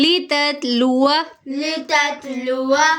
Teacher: آپ پہ کلکلا نہیں کریں گے، ٹھیک ہے، تو اس کو کلکلا بھی نہیں کریں گے، اور دیکھیں آگے واو کے اوپر زبر ہے، اس کو زبر ہی پڑھیں گے، آگے جو الف آ رہا ہے اس کو لمبا نہیں کریں گے